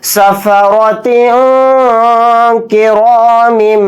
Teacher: اخفا بھی کریں گے کیونکہ یہاں تا کے نیچے تنوین ہے، تنوین کے بعد کاف آ رہا ہے تو اس میں اخفا کا قاعدہ یہاں پر ہو رہا ہے